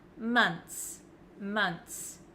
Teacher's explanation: it looks like there's just a TS at the end I don't pronounce the h